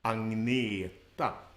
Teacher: the stress is on the second part of the word